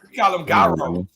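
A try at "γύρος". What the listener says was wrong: You're right, gyros, but it's actually gyro. You know, G is silent in Greek language.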